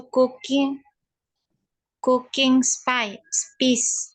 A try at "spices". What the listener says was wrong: Spices. Ini ada S-nya nih di belakang. Spices.